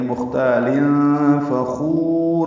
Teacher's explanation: خا کو پر پڑھیں گے، لمبا کریں گے، را کو پر پڑھیں گے وقفاً. واو مد ہے، مد عارض سکون بنے گی، فخور را پر ہوگی.